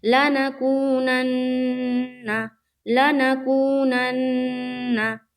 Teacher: नून मुशद्दद का गुन्ना करना है, यानी कि थोड़ी देर आवाज़ को रोकना है।